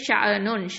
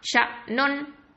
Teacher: ஹம்சாக்கு சுகூன் இருக்கு. அப்போ என்ன பண்ணணும்னா ஒரு ஸ்டாப் தான் கொடுக்கணும். கல்கலா பண்ணிடக்கூடாது. நிறைய பேர் ஷ நுன் ஷ அப்படின்னு ஒரு சவுண்டை கொடுப்பாங்க.